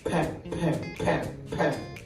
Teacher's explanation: When we produce that pronunation pen, we block the air with the lips